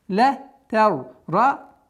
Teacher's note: Здесь у нас твердое произношение, потому что с сукуном ра и впереди стоит фатха, она твердая.